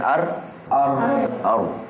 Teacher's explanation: huruf ra dan disebut mengembalikan ataupun mengulangi getaran lidah sekali lagi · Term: takrir